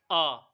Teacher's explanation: आ को हम जब उच्चारित करते हैं, तो हमारा मुख पूरा का पूरा खुलता है। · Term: विवृत